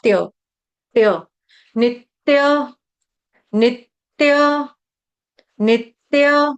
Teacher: double त छोटे-छोटे दो त आधे-आधे दो त आएंगे